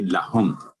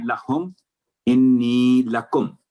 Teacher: تو اس کے علاوہ جو نیچے ہے اللہم وہاں آپ نے میم پر اخفاء اظہار ہے کیونکہ میم ساکن کے بعد نہ تو اگلا حرف با ہے نہ میم پر تشدید ہے تو صرف 1 سیکنڈ کا آواز ہوگی لہم. اس طرح تھوڑا سا آگے رسول انی لکم یہاں بھی تھوڑا سا آپ نے آواز لمبی کی تو دونوں جگہ لہم انی لکم.